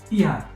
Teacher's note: Another big phonetic roadblock is the phrase il y a, which means there is. But when spoken at native speed in a casual setting, the il completely disappears. The phrase is condensed into the single sharp sound ya